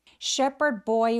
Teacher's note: D는 Shepard드 Boy라고 소리 나지 않도록 디귿 받침 정도로 Shepard Boy라고 바로 연결해 주세요.